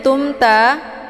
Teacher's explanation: mim sukun bertemu dengan huruf Ta ini dinamakan dengan izhar syafawi cara bacanya mimnya dibunyikan secara jelas